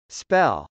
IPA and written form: spˈɛl (spell)